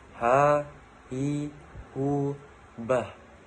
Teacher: Huruf H dikeluarkan dari tengah tenggorokan.